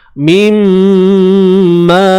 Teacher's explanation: Bunyi nun ke dalam mim bi gunnah dengan dengung. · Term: idgham bi gunnah